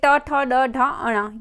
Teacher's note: ये मूर्धन्य व्यंजन कहे जाते हैं अर्थात इनका उच्चारण मूर्धन्य से किया जाता है